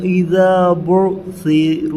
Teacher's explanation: أَفَلَا يَعْلَمُ إِذَا بَعْثِرَ مَا فِي الْقُبُورِ۔ یہاں پر با کی جگہ پیش ہے، با پڑھ رہے ہیں، تو زبر پڑھ رہے ہیں